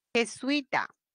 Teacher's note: la fuerza de voz está en la penúltima es una palabra grave